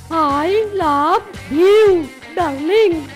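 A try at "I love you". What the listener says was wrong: হয়নি গো, ভিউ বলো না, ইউ বলো।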